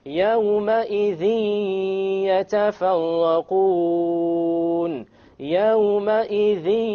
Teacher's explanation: there's a ghunnah, okay? And there is no clear end sound.